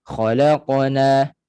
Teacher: Laqa, lantun pada huruf qaf. Dia bergegar pada huruf qaf, dia tidak beralih kepada tempat lain, dia tidak beralih kepada huruf lain, terutama hamzah mati. Kalau khalaqa, kita dah beralih kepada makhraj hamzah tanpa sedar, jadi tak perlulah khalaqana. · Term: qalqalah